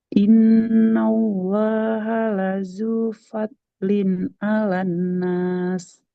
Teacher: nunnya harus panjang karena fathah ketemu alif